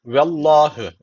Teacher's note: ve Allah lafzı burada kalın okunuyor Neden Çünkü öncesindeki harfin harekesi üstte yani Allah lafzına üstten bağlanılıyor